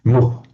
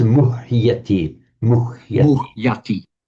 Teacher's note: It's the root is muh. And the H has to be distinctly pronounced as an independent freestanding syllable. So muh.